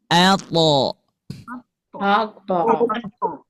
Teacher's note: ujung lidah bertemu dengan gigi seri atas